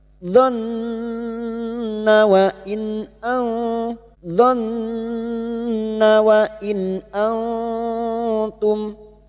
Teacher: nun yang bertasdid gunna musyaddada kita dengungkan selama 3 harakat